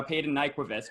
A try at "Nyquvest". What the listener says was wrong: It's actually. No, the V is a silent one.